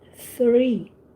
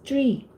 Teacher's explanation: 3 is with H, with your tongue out, 3. And tree with leaves and fruits, and it's tree.